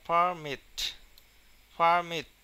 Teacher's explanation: যখন ভার্ব হিসাবে ব্যবহার করা হবে তখন কিন্তু মিটে উচ্চারণে চাপ দিতে হবে